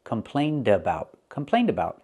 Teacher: Now we're linking complained with a vowel, so you hear the d sound. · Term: Link the sounds